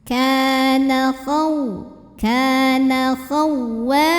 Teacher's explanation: karena ada alif yang didahului baris fathah, maka huruf waw kita panjangkan 2 harokat. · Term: mad tabi'i dhahiri